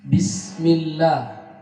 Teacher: lafaz Allah di sini dibaca tipis, tarqiq, karena didahului harakat kasrah